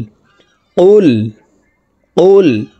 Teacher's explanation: আমরা এখানে ম্যাক্সিমাম মানুষ এই কুল পড়ে থাকি, কুল পড়লে অশুদ্ধ হবে। কফের মাখরাজ জিব্বার গোড়া তার বরাবর উপরের তালুর সঙ্গে লাগাইয়া উচ্চারণ করে পড়তে হবে।